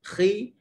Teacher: ada lagi kesan pangkal lidah terangkat, cuma kekuatannya telah berkurang kerana dia berbaris bawah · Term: isti'la